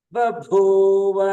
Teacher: ಬ ಸ್ವರಿತ ಭೂ ಮಹಾಪ್ರಾಣ ಉದಾತ